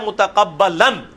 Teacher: وقف ہوگا تو ایک زبر اڑ کے الف مدہ بن جائے گی تنوین کی بجائے